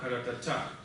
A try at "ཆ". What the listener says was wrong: Придыхание чуть больше. Куда язык? Громче. Придыхание больше.